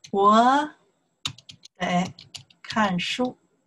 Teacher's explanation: 得, the third tone. 看, fourth tone.